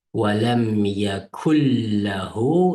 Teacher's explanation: Sakinlik nun. Aqidin lam harfi kelgan vaqtida bu nun lamga yeyishib ketadi. Yani idg'om deydi buni.